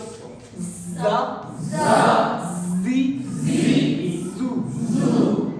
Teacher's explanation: इनमें सीटी की आवाज आएगी और ये ऊपर और दो नीचे वाले दांतों को मिला के ऐसे पहले सीटी की आवाज निकाल लेते हैं